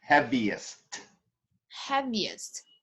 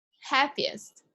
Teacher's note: you have to give me the T at the end of it too